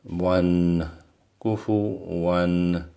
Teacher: we don't nasalize it too much because this kufu one is followed by hamza here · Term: izhar